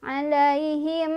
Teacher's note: Alaihim di sini ada idgham mimi atau idgham mithlan karena ada mim sukun bertemu mim. Cara bacanya adalah kita langsung baca ke mim yang kedua sambil didengungkan.